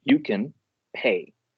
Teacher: you can becomes one word and then pay becomes the second word with the stress on that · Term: liaisoning